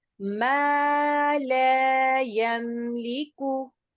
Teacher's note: जबर के बाद अलिफ आ जाए, जेर के बाद या साकिन, या पेश के बाद वाव साकिन, तो उन जबर जेर पेश को बढ़ा के पढ़ते हैं। तो यहाँ पर हम लाम की जबर को बढ़ा के पढ़ेंगे। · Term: अलिफ मद्दा